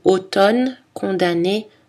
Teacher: dans les mots automne condamné on prononce seulement le n